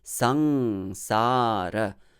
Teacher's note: the first syllable sang is a heavy syllable even though it has a short vowel it is a heavy syllable because of that anuswara and then